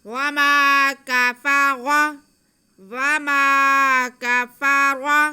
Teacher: وما، وما کفر، کاف پہ زبر، فا پہ زبر، را پہ زبر، تو تینوں کو بالکل بھی نہیں کھینچنا. را کو بس موٹا کر کے پڑھیں گے کیونکہ اس کے اوپر زبر ہے.